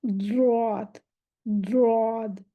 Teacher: ज़्वाद, सांस रुकेगा, आवाज चलेगी, इस्तिला है, और इसमें भारी मोटापन होगा, ज़ुबान का पिछला हिस्सा ऊपर उठ जाएगा